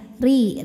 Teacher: dibunyikan dengan tipis lidah rileks pangkal Lidah Tidak perlu naik